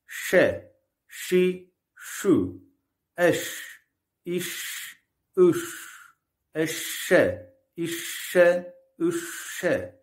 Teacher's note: Şin harfi dilin orta kısmının üst damağa yapıştırılmadan kaldırılmasıyla çıkar. İnce bir harftir.